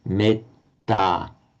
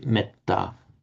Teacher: you'd still hear that long e before the double T, metta, whereas in Pali, metta